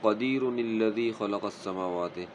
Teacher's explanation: اور نون لام کے ساتھ نِلَّذِي پڑھا جائے گا